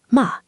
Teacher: The fourth tone is a sharp falling pitch. It starts high and drops fast all the way down. The pitch falls like a hammer coming down.